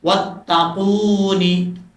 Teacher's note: قاف کے بعد واو مدہ ہے، ایک الف کی مقدار، اس کو لمبا کر کے پڑھیں گے